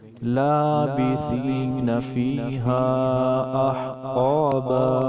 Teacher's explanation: فیہا کے اوپر مد کریں گے، یہ مد منفصل ہے کیونکہ حمزہ دوسرے کلمے میں ہے